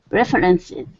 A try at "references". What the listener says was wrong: so we don't have that second ER it's just refences